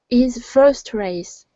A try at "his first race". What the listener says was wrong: Okay, pronounce that H. Instead of is, it's his. Now you want to pronounce the H. Okay, so it's his first race.